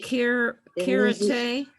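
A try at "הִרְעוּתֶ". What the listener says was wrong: Hirute. Okay, so after the resh is an ayin, and that's silent. So we're gonna just pronounce the letter next to it, which is u. That's vowel. Hir u te. Hirute. Okay, but it's a chaf, not a kaf. So it's going to be hirute.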